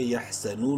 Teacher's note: واو مدہ ہے، نون کو 1 الف کے برابر لمبا کریں گے